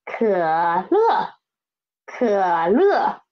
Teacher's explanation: It is a third tone and fourth tone.